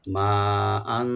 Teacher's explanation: মা আন, এখানে মিম ওপেন রেখে 4 আলিফ টানবো আমরা, এবং হামজার উপর যে তানভিন আছে, তানভিনটাকে আমরা ইখফা করবো এখানে, রাইট গুন্না